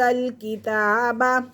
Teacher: تا کو ایک الف کے برابر کھینچ کے پڑھیں گے